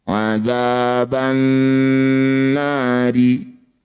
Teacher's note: Alif dan lamnya abaikan saja, tidak usah dibaca, langsung masuk pada huruf yang bertanda tasydid. · Karena yang bertanda tasydid adalah huruf nun, ini sekaligus jadi bacaan gunnah musyaddadah. Jadi bunyi nunnya kita dengungkan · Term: idgham syamsiyah